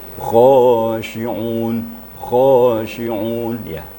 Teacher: Kha itu harus ada getaran. Sifatnya juga isti'la. Khisu dil ting til, termasuk kha huruf isti'la, diangkat pangkal lidah kita.